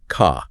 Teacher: Be is generally non-rotic. that R sound after a vowel is dropped. So car sounds more like ca.